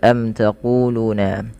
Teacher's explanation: Mim mati bertemu dengan ta dibaca dengan jelas suara mimnya karena dia izhar syafawi. Kemudian panjang ku dan lu harus sama karena kedua-duanya mad thabi'i.